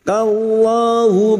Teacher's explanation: lam jalalah yang didahului fathah kita baca tafkim.